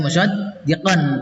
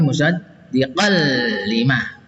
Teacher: Musaddiqal ini yang merah, tidak dibaca musaddiqan tapi musaddiqal lima ya. Ini idgham bilaguna, masuk dengan tidak dengung